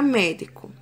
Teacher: a sílaba tônica é me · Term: proparoxítona